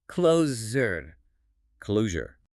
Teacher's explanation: The deuce here doesn't make a sound or a chi sound. It makes a voiced vibrating zik sound deep in your throat.